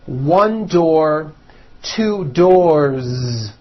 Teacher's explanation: one door two doors with a voiced Z ending